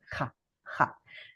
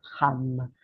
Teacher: It's almost like you're saying ha, ha, but you have a little bit of friction between the back of the tongue and the back of the top of your mouth.